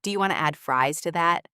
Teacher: Want to becomes wanna,